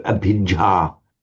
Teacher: but remember the doubled consonants. We've got to be very careful to hold them